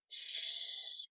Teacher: it's palatal because the tongue, the body of your tongue touches the soft palate. So ch, kind of feel where your tongue is.